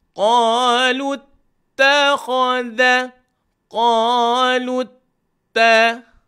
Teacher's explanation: Kalau lut ta ni dua harakat sebab sabdu.